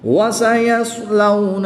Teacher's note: صاد ساکن ہے تو اس کی ادائیگی کا خاص خیال رکھیں گے، صاد ہی پڑھیں گے، سین یا تا نہیں پڑھیں گے